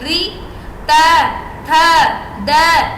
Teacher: अब बिल्कुल दांतों से हमारी जो जीभ है बिल्कुल दांतों पे जाके लगेगी ऊपर नीचे भी नहीं बिल्कुल सटीक दातो प जाके ल री